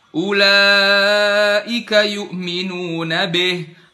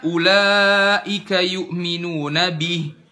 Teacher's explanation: harakatnya kasrah ulaika yminun Bih Harusnya kan ulaika yminuna Bih Bih kasrahnya jelas i bukan dimiringkan jadi e